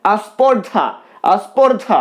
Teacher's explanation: সরাগম স্পর্ধা স্পর্ধা স্পর্ধা প্রথমেই দন্তস প রয়েছে যুক্ত ব্যঞ্জন রয়েছে তো এই যুক্ত ব্যঞ্জনের উচ্চারণের কষ্টকে দূর করার জন্য স্পর্ধার আগে একটা আ নিয়ে আসা হলো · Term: আদি স্বরাগম